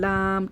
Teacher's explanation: गोल किनारे ऊपर वाले तालू से लगेंगे तो ये लाम अदा होगा